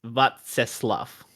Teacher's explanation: I probably went a little bit too close to an F on the end there